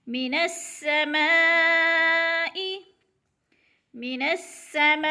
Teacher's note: ما پہ مد ہو رہی ہے، مد متصل، اس کو 4 حرکات کے برابر کھینچ کر پڑھنا ہے